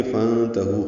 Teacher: نون ساکن پہ اخفا ہے، نون ساکن کے بعد تا آنے کی وجہ سے. ہو واو مدہ ہے، 2 حرکات لمبا کریں گے، چاہے وقف کریں تب بھی 2 حرکات ہی لمبا ہے